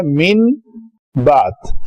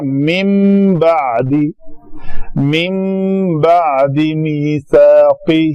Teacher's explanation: نون ساکن کے بعد اگر با آ جائے، کوئی بھی حرف با متحرک، تو کیا ہوگا؟ اقلاب ہوگا. تو اقلاب قاعدہ یہ ہے، اقلاب کا مطلب ہے بدل دینا.